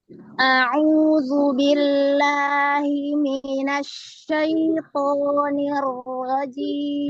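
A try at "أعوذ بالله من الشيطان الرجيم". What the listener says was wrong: Huruf shin setelahnya itu ada huruf apa? A'udzu billahi minasya. Lin ya. Jadi jangan a'udzu billahi minasyaiton. Lin pelan. A'udzu billahi minasyaitonir rajim.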